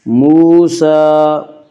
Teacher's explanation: موسیٰ، سین کے اوپر کھڑا زبر ہے، کھڑا زبر قائم مقام ہے الف کے، اس لیے کھڑا زبر کو ایک الف کے برابر کھینچ کر پڑھیں گے